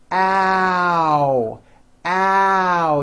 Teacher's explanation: It starts with a, but then it moves forward. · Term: ow sound